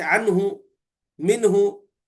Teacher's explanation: ہے ساکن، تو وہاں پر جو ہے ہائے ضمیر مضموم ہوگی، ہائے ضمیر مضموم یعنی پیش ہوں گا وہاں پہ، صلہ نہیں ہوں گا